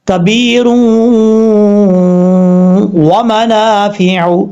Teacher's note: دو پیش کی تنوین کے بعد واو آئے گا تو یہاں پہ ادغام ہوگا اور غنہ بھی ساتھ ہوگا، ایک الف کی مقدار